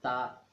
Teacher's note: تا کو ادا کرتے وقت زبان نظر آتی ہے، دانتوں سے آگے لے جایا جاتا ہے تا، یہ اس کا غلط طریقہ ہے۔